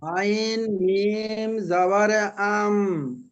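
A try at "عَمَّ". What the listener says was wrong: আম, আইন মিম সাবার আম, এই মিম এসেছে এখানে দেখেন, গুণনা হবে। আইন মিম জাবার পড়েন, হচ্ছে আপনি গুণনাটা একটু কম হচ্ছে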